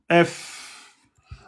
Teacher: L'extrémité des incisives supérieures sur l'intérieur de la lèvre inférieure. Donc on a les dents du haut en appui sur les lèvres inférieures. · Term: lèvre dent